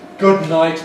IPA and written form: ˈgʊd ˈnaɪt (good night)